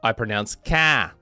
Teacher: the typical Massachusetts thing where I drop the R in certain words